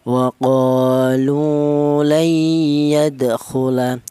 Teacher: atau arti yang lain yaitu menyatu atau melebur bahwa cara bacanya nun mati ini langsung menyatu ke huruf ya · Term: idgham bighunah